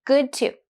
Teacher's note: another link of two similar consonants D in good and T in to